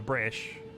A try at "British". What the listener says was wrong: Without the T. British.